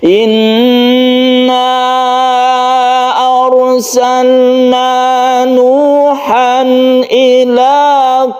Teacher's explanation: dari hamzat tersebut itu berasal dari tenggorokan atau alhq atau halqi maka cara membacanya adalah dibaca terang jelas dan tidak berdengung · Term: izhar halqi